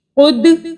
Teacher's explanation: اوپر کی طرف جائے گی اور پیش میں جو آپ کا ماؤتھ کی جو پوزیشن ہے وہ راؤنڈ گول اور لپس آگے کی طرف ہو جائیں گے